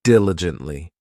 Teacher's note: This adverb has four syllables and the stress is on that first syllable,